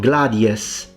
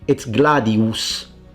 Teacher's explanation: It's a fully pronounced oo always.